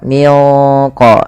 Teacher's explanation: Caranya nunnya samarkan ke qo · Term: ikhfa ab'ad